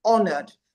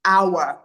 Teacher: The H is silent because it's a borrowed French word.